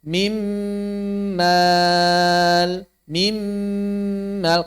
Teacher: Suara nun pertamanya hilang 100%. Dan huruf keduanya bertasydid. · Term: idgham